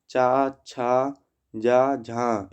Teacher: चा, छा, जा, झा स्पर्श संघर्षी हैं